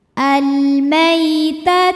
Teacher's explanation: ada huruf lin sebab ada ya sukun yang sebelumnya berbaris fathah maka dibacanya lembut atau lunak